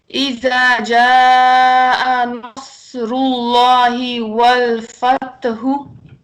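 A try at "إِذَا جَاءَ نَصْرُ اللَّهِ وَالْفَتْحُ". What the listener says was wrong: شاباش شاباش، بالکل ٹھیک بالکل ٹھیک.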